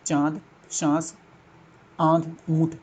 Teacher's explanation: जिन वर्णों का उच्चारण मुख और नासिका दोनों से किया जाता है वे अनुनासिक कहलाते हैं